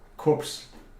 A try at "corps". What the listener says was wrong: Corps. This isn't pronounced corpse. This is core.